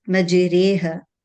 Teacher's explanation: when you give the imala, the raw would be light. · imalat al-kubra, you see, it is closer to the ya, yeah. mm, It's closer to the E sound than to the sound, right?